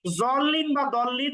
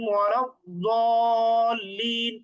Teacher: তার মানে জিহ্বার একেবারে শেষের দিকের যে পার্শ্ব আছে, সাইড আছে, এই সাইডটা উপরের দাঁতের মাড়ির সাথে লাগাতে হবে। ডান সাইডটা ডান মাড়ির সাথে, বাম সাইডটা বাম মাড়ির সাথে লাগিয়ে জ এবং দ এর মাঝামাঝি। সুতরাং জল্লিন বা দল্লিন উভয়টাই ভুল। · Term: দোয়াদের